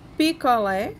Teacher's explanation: Picolé, sua sílaba tônica será lé